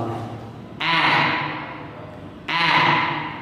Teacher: người ta hay gọi âm này là âm nửa a nửa e, đúng không? Giống như nửa a nửa e như kiểu thế, nhưng mà miệng phải mở rộng · Không phải là âm dài mà hơn so với âm e như thế này, và miệng mở rất rộng, đọc như âm a. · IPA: /æ/